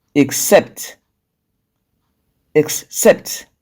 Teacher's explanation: they have the stress on the second syllable their stress is usually on the second syllable for the rule